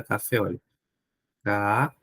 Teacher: Vocês já sabem que a sílaba tônica é a última. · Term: oxítona